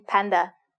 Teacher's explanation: p like the p in Panda you should feel air coming out of your mouth when you make this sound